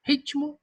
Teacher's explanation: Parece ter um I. Na representação fonológica, coloca-se um I entre o T e o M.